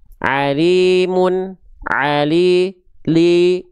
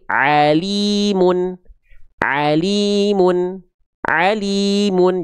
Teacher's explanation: Tengah lidah teman-teman angkat ke atas. Tengah lidah teman-teman jangan nanggung diangkat ke atasnya. Naikin ke atas sehingga jelas vokal i-nya. · Tolong jelaskan vokal i-nya. Harus jelas. Jangan miring ke vokal e.